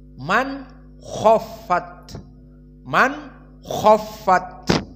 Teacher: Maka jumhur ulama seperti yang kita pelajari di tajwid Hafiz an Asim dan semua qurra yang 9, maka mereka membaca bil idhar. Nun as-sakinah bertemu dengan kha dibaca idhar.